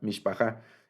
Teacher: Entonces tenemos el acento va al final, y aquí está partida la palabra en las 3 sílabas que contiene. El acento va al final. Entonces, esta es la sílaba tónica, se llama.